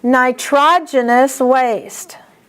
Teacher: Here's another one that's oftentimes mispronounced. The accent is on TROG.